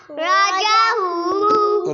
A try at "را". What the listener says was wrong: را موٹی پڑھنی ہے.